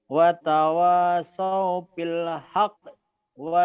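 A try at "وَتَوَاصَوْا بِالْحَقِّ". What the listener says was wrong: boleh, nggak boleh begitu bacanya. Jadi hidup, jadi hidup. Tadi kan dihentikan. Wa tawasaw bil haqq. Kolkolah kan? Kolkolah kubro yang besar karena bertasdid.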